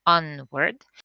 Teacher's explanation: onward is a polysyllabic word with the stress on the first part